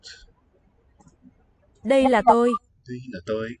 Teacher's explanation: that's an implosive D. We're sucking the air into the mouth as we articulate that.